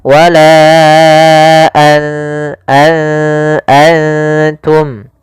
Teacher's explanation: Maka apabila ada nun sukun atau dia huruf yang tanwin an, in un, karena tanwin dan nun sukun itu sama bunyinya kedua-duanya adalah bunyi n. Maka ketika bertemu ta nunnya disamarkan ke huruf ta an langsung kepada makhraj daripada makhraj huruf ta. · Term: ikhfa